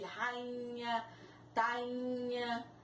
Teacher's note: o I está seguido de NH e ele começa a ter um som nasal, ele tem um som nasal, então não é possível colocar o acento sobre a vogal I, no caso de rainha, tainha.